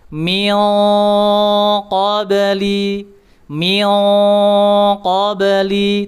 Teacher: tidak boleh ming itu terlalu terlalu tipis dia harus tebal mengikuti sifat huruf tebalnya.